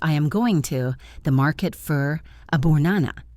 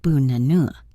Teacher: It sounds choppy. In fluent English, we turn the unstressed vowels into that soft schwa sound.